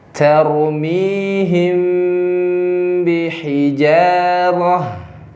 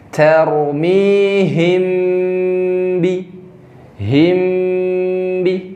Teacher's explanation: Iya, Dua bibir tertutup. Nah, jadi mim bertemu dengan ba, kemudian ditahan tiga ketokan. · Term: mim sukun